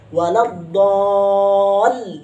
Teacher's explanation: panjangkan dulu baru masukkan kepada tasydid lamnya